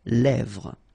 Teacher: Same thing here, final S not pronounced, and then this E accent grave here, it gives you the E, really open sound